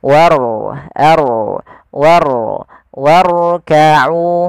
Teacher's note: Pada lafal warka'u di sini ada huruf ro yang ditandai dengan warna biru tebal. Mandakan huruf rnya dibaca dengan ro tafkhim yaitu ro yang tebal